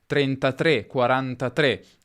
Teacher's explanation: teoricamente qui abbiamo a che fare con una pronuncia chiusa della E